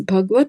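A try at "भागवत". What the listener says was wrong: So it is Bhagavata. Bhagavata. So, but in the Hindis, they will cut some, they do not take A at the end, they'll cut the A. So, actually, it is Bhagavata.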